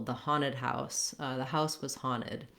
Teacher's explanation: the letters NT in American English, Americans will often drop the T sound. So sometimes Americans will say haunted rather than haunted.